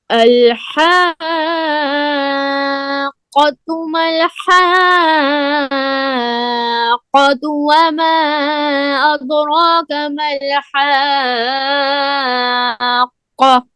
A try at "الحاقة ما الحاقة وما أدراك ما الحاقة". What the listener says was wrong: ایک تو آپ نے مل طرح پڑھا ہے، مل ہے، لام میں آواز بند ہوتی ہے. دوسرا جب حاقہ کہتے ہیں نا تو ایسے محسوس ہو جیسے آواز بند ہو رہی ہے.